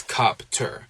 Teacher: in helicopter, the P and the T sounds can be split into two different syllables